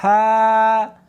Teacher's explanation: اس کو حلق میں سے نکالنا ہے اور ساتھ میں ہوا بھی ہونی چاہیے. ہا ہاں نہیں پڑھنی بلکہ اس کو حلق میں سے نکالنا ہے، سینے میں سے نہیں نکالنا۔